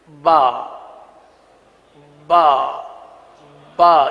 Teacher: اگر تر حصے سے کے بجائے خشک حصے سے ادا کریں گے تو با کے بجائے پا بن جائے گا. وہ حصہ جو باہر کی طرف ہے، یہ ہونٹ کا جو حصہ ہے یہ باہر کی طرف ہے.